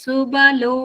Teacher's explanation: ಇಲ್ಲಿ ಬಾ ಮಹಾಪ್ರಾಣ ಹೇಳ್ಬಾರ್ದು, ಸುಬಲೋ ಅಷ್ಟೇ, ಸುಭ ಅಂತ ಹೇಳ್ಬಾರ್ದು.